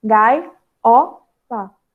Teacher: Em gaiola, também a gente vai ter um encontro de duas vogais, formando um hiato. E por isso, a separação dela.